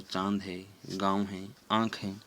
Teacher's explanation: उच्चारण नाक और मुंह से दोनों से किया जाता है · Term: चंद्रबिंदु